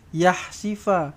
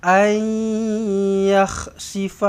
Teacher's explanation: Kha ni di getarkan dia, kahakkan dia. Okey, jangan yahsifa.